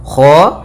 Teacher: Kha usahakan dia dari tenggorokan atas mendekati pangkal lidah kita.